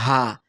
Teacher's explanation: ভিতর থেকে একেবারে কণ্ঠনালীর শুরু থেকে উচ্চারণটা হবে হা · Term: হামজা হা